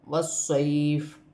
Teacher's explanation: وقف کی صورت میں زیر گر جائے گی اور فا ساکن ہو جائے گی